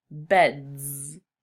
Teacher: bed ends in D, which is a voiced sound, so you would add Z to the end to make beds.